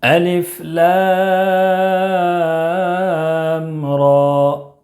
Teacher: لام میں مد لازم حرفی مخفف، طول 3 الف یا 5 الف کے برابر کھینچ کر پڑھیں گے، اور را میں کھڑا زبر ہے، کھڑا زبر برابر ہوتا ہے الف مدہ کے، اس لیے اس کو 1 الف کے برابر کھینچ کر پڑھیں گے